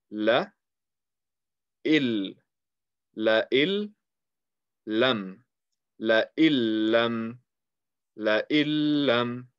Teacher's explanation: Instead of reading in, you are going to read il. You are removing the noon sound and you are merging it with the letter that is after idgham. That is after the noon sakin tanween.